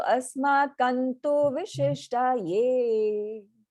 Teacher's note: Letting the nasal sound take the form of the t, right? So asmakantu vishishtaye.